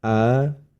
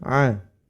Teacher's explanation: huruf hamzah tersebut berada di pangkal tenggorokan ya makhrajnya terdapat di pangkal tenggorokan sedangkan huruf Ain berada di tengah tenggorokan ya tempat keluar hurufnya